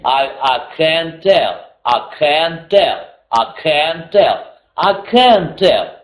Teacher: На can чуть-чуть побольше, но на tell тоже ударение падает.